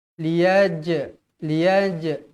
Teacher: jim jim ni hukumnya Qalqalah Sugra liyaj mesti dibaca melantun